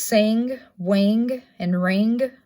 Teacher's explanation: ing which is that n with a a g bottom um it is a velar placement it is voiced